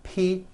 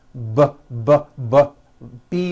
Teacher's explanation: say the P sound and the B sound are paired consonants they are produced exactly the same way here in your mouth but the P sound has no voicing and the B sound BB does have voicing